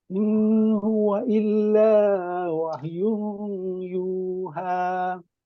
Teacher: Di sini ada satu dengung, tanwin bertemu dengan ya, wahyun. Di situ idgham ma'al ghunnah.